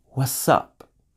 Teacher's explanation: Notice with what's up, the t sound disappeared completely.